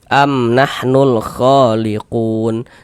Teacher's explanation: Alif lam qamariah itu disebut juga dengan izhar qamariah. Karena cara membaca huruf lamnya dibaca izhar, dibaca jelas, terbaca huruf lamnya